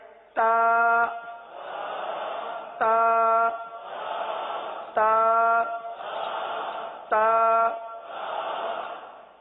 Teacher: تو زبان کی نوک کو آپ نے دانتوں کی جڑ پر لگانی ہے